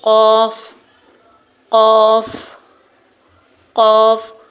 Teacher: قوف کا مخرج کیا ہے کہ جب زبان کی جڑ یعنی جہاں پر زبان کا اینڈ ہو رہا ہے وہ اوپر لحاظ یا کوے تالو سے لگے گی تو پھر حرف قوف ادا ہوگا